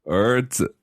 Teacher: So 儿子, that's going up. Is second tone. 儿子, neutral tone.